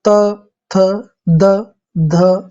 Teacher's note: दंत में आपकी जीभ जो है दांतों को टच करेगी, जैसे त, थ, द, ध और न, टच हुआ।